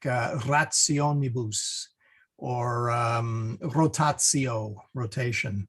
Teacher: R is rolled a bit, similar to Spanish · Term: rolled R